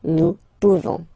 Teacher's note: classic ending for nous, this ONS ending for nous, okay? Nous pouvons, okay? You don't pronounce the final S.